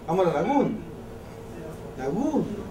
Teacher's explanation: Si abre la vocal, y la corta y después sigue la siguiente sílaba. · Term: apertura vocálica